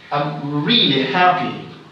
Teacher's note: So the word really here is the word I'm emphasizing.